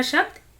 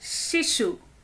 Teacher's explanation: हमारा टांग पैलट को तालू को टच कर रहा था इसीलिए हम इसे तालव्य श कहते हैं